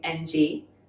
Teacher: in cantonese it's the low-rising that unvoiced kind of nasally